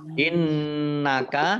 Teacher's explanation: nun tasdid dibaca gunnah atau mendengung, ditahan 2 harokat